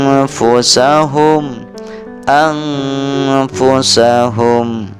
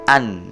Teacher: Ini adalah contoh bacaan ikhfa, karena setelah nun mati bertemu huruf ikhfa berupa huruf fa, maka harus dibaca samar-samar